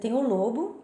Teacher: Você tem o lobo, que é o animal, daí você vai falar com o O fechado, mas quando você está se referindo à parte do crânio, você fala lobo, tá?